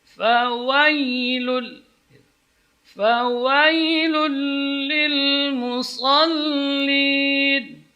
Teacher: Wa tidak boleh miring, tidak boleh dibaca mail kepada ya, bukan fawai tapi fawa.